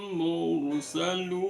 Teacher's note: ro-nya dibaca tafkhin karena ro sukun sebelumnya ada dhammah, maka ro-nya dibaca tafkhin